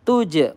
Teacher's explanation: tuj qalqalah sugro memantul